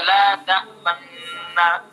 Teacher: ٹھیک ہے، تو لا تأمنونا پہلا نون بھی متحرک دوسرا بھی متحرک، تو پہلے کا دوسرے میں، پہلے کو ساکن کر کے دوسرے میں ادغام کر دیا اور ایک بنا دیا دونوں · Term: ادغام کبیر